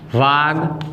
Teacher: અહીંયા ક છે અઘોષ છે અને દ છે એ ઘોષ વ્યંજન છે, માટે કના સ્થાને તેના વર્ગનો ત્રીજો વ્યંજન આવે તો શબ્દ બને વાગદાન.